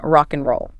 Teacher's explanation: A really common one is and, often becoming just N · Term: Elision